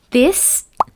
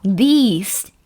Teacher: in English language, this, the short vowel, and these, the longer vowel. So this and these, different meaning. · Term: length